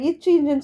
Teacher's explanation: இச்சு, இஞ்சுன்னு சொல்லும் போது நாவோட இடைப்பகுதி, நடுப்பகுதி, அது நடு அன்னத்தின் இடைப்பகுதியை பொருந்துவதால் பிறக்கிறது